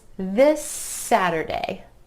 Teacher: that final SS sound at the end of this is continuing on into the word Saturday